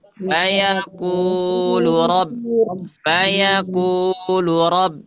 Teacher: Karena ku-nya panjang, jangan sampai lu-nya ikutan 2 harokat.